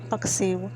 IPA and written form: pɐk.ˈsɪʊ̯ (Paksiw)